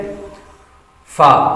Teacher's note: फा इसका मखर ऊपर के दांतों के किनारे और निचले होठ के तर हिस्से से अदा होता है